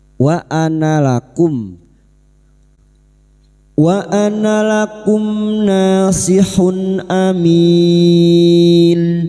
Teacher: mim sukun bertemu nun idhar syafawi, mim sukun dibaca jelas tanpa mendengung. Bertemunya mim sukun dengan huruf hijaiyah selain mim dan ba, mim sukun dibaca jelas tanpa mendengung.